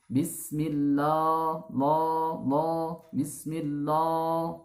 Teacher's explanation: huruf lafaz jalalah di sini tarkik jangan sampai dibaca tebal